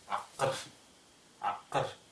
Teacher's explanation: гласные заднего ряда, и поэтому рядом с ней взрывная согласная будет с заднего ряда. Вот здесь, глубоко сзади.